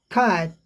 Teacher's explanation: कैट को जब बोलेंगे फास्ट कैट तो ट सुनाई नहीं पड़ता है, नॉट ऑडिबल रिलीज, सुनाई नहीं पड़ता है, बिना सुनाई हल्का सा पड़े ही रिलीज हो जाता है, आगे बढ़ जाता है।